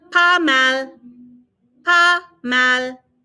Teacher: Notice I'm not pronouncing the S. We very rarely pronounce S's on the end.